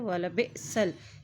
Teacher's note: हमज़ा साकिन है, हमज़ा के ऊपर जज़म है तो इसको झटका देकर अदा करेंगे।